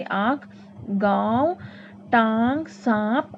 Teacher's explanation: अनुनासिक का उच्चारण नाक और मुंह से किया जाता है।